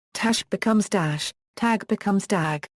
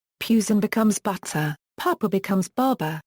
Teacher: To the layperson, this difference is most noticeable on the unvoiced stops, rendering them extremely similar to or indistinguishable from voiced stops. For example, T to D, tash becomes dash, tag becomes dag.